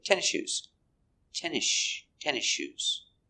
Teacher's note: When you say, is she, the S before the SH sound, you don't hear the S.